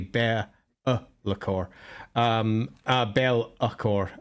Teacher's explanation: the addition of the apostrophe in the middle, which is generally a glottal stop. So actually, if we're pronouncing it correctly, it's actually Be'lakor.